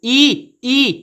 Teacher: ई जीवा आगे की तरफ आ रही है। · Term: अग्र स्वर